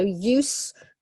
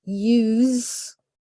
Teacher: we've got use gotta be careful with the pronunciation here so use for the noun use for the verb it has a Z sound